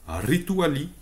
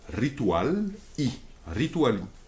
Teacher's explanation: le re de rituel, au début de rituel, le re français devient la R espagnole, encore une fois